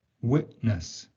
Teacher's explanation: The voiceless alveolar plosive sound t is often replaced with a voiceless glottal plosive in connected speech. This most frequently occurs when t appears at the end of a syllable and the following sound is a consonant. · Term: Glottal stop